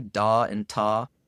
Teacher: when i say da and ta i don't feel any teeth at all um it's completely on the roof of my mouth